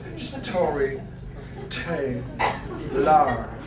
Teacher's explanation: Depois o R mudo final do inglés que te obriga a relaxar a queixada.